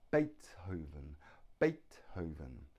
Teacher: now the stress is on the first syllable Beethoven has Beethoven three syllables the stress is on the first